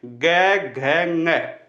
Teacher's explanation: इसके बाद में ग घ ng, क वर्ग में देखो जो कंठ से बोले जा रहे हैं, ग घ ng, इनमें भी गूंज उत्पन्न हो रही है, घोष उत्पन्न हो रहा है। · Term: सघोष